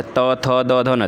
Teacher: त थ द ध न दंत वर्ण